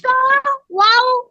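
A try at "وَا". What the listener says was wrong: ওয়া। তুমি টান দিচ্ছ না কেন? এগুলো তো সব মধ্যে তবা আই, এক আলিফ টান হবে। জবরের পরে খালি আলিফ আসছে। সদ জবর স, ওয়াও আলিফ জবর ওয়া, এভাবে বলো।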